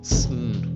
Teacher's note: pay attention to how your tongue blocks the air in your mouth to produce a nasal consonant, sn.